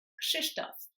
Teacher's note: when there's KRZ, it's pronounced ksh. So you've got the k sound and then sh afterwards.